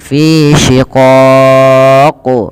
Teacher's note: Kita baca pada lafal qaf ketika kita waqaf, ini kan berarti qafnya menjadi qaf yang sukun. Maka ketika qaf sukun itu terhukumi dengan hukum bacaan namanya qalqalah. Maka ia perlu dipantulkan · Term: qalqalah kubra